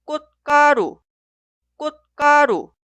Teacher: Y la sílaba posterior de esta consonante final 쯧 inicia con 기역, 디귿, 비읍, 시옷 y 쯧. En este caso, las consonantes iniciales suenan como sonidos forzados.